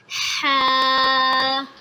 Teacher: ہا حلق کے درمیان والے حصے سے ادا ہوگا